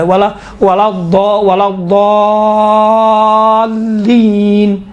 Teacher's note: دیکھیں خود لام ہے نا، لام یقیناً حروف لین میں سے باریک پڑھا جاتا ہے، کاملاً باریک ہے، لیکن یہاں پر لام چونکہ لام کے اوپر تشدید ہے، تشدید کی وجہ سے لام کا تلفظ تھوڑا سا موٹا اور ضخیم اور غلیظ طریقے سے کیا گیا ہے